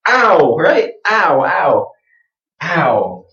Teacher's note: But all you really want to do is start just like I, open mouth, very wide.